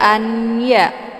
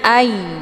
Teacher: ditahan dulu bacaannya Jangan dibaca anyya itu bacaan yang salah tapi nunnya sudah dileburkan ke dalam huruf ya jadi bunyinya Ai hukum bacaan Idam Bah dibacanya sambil didengungkan wala